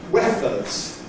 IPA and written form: ˈweθəz (Weathers)